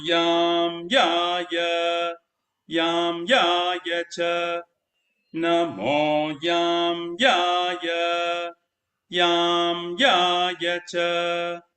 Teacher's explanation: The emphasis is on ya, not on the ma, because you can't you can't you cannot put emphasis on that, right?